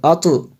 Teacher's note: ایسے ہم نے پڑھنا ہے کہ آواز لوٹتی ہوئی نکلے جی، لوٹتی ہوئی آواز آئے جی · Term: قلقلہ